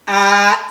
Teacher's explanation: the first tone is a high flat. You can see a a is flat.